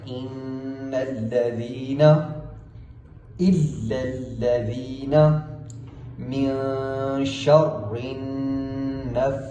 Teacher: ان نون کے اوپر تشدید ہے تو ہم نے غنہ کرتے ہوئے پڑھنا ہے